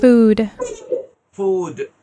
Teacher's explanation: এটা কিন্তু লেবিওডেন্টাল, ফটা কিন্তু উপরের দাঁত নিচের ঠোঁট